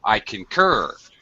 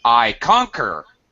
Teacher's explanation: notice how I very much use use higher pitch on the second syllable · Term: second syllable stretch